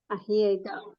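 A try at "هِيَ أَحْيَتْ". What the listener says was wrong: യാ വേണ്ടെന്ന് പറഞ്ഞായിരുന്നു. അപ്പൊ യാ വേണോ? യാ ഒഴിവാക്കി പറയും. ഹിയ അഹിയത്ത്.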